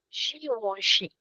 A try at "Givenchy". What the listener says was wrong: Yeah, the first sound is a little different. It's Givenchy. Givenchy.